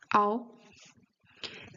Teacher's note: It's always an O, but it starts closed and ends open.